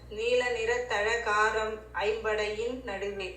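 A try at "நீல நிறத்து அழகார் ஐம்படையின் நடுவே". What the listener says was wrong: காரம் இல்லமா நீல நிலத்தழகார். நீல நிறத்து அழகார் நீல நிலத்தழகார் ஐம்படையின் நடுவே.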